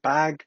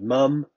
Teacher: the pressure of the air stream will cause them to vibrate when the vocal folds vibrate we can produce voice consonants like the first and last sounds in bag and mum